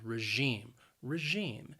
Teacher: and the stress is on that second syllable regime and that that second syllable notice it has that long e sound